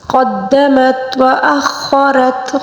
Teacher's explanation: خا کو پر پڑھیں گے، را کو بھی پر پڑھیں گے